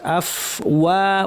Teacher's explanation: ফায়ের আওয়াজ বাতাস দুইটাই যেন থাকে, সাবলীল ফ্যাসফ্যাসে আওয়াজ। আফ ওয়া কমপ্লিট করে, হ্যাঁ ও না, অনেকে ভুলে বলেন আফ ওয়াজা, ওকে ভারী করা যাবে না, ওয়া পাতলা থাকবে।